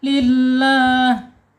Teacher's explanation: Lam jalalah. Lam jalalah dibaca tarqik tipis ya. · Lam jalalah dibaca tarqiq tipis ya. Lillah. Ya, betul, dengan tanpa gunah ya.